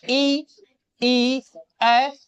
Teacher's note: आपके जीभ के आगे के भाग से जो स्वर उच्चरित होते हैं उसको हम क्या बोलेंगे, अग्र स्वर बोलेंगे